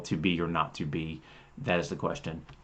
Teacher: And that idea of what is emphasized on those stressed syllables, be, not, be.